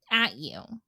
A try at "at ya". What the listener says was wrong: At ya. No. It's you got to kind of blend those together. It's at ya.